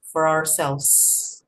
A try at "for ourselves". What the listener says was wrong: The S. You missed the S. I still cannot hear the S.